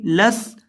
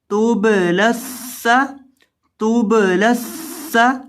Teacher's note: لام زبر سین لس، لام کو آپ نے سین کے ساتھ ملانا ہے کیونکہ لام کے بعد سین مشدد ہے، یہ جو درمیان میں یا ہے اس کو نہیں پڑھیں گے، لام کو سین کے ساتھ ملائیں گے